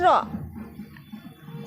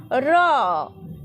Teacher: শ্বাসবায়ু নির্গত হওয়ার সময় জীবাগ্র দন্তমূল স্পর্শ করে অনুরন বা কম্পন সৃষ্টি করলে যে ধ্বনি উৎপন্ন হয় তাকে কম্পিত ব্যঞ্জন ধ্বনি বলে